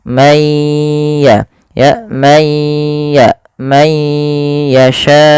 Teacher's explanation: Cara membacanya masukkan suara nunnya kepada ya teman-teman. Masukkan kemudian ditahan suara ya-nya. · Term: idgham bighunah